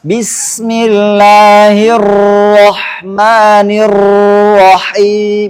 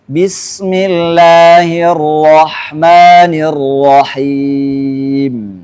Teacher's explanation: Berarti bergetarnya ujung lidah. Ar-Rahman, Ar-Rahim, ujung lidahnya bergetar. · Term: takrir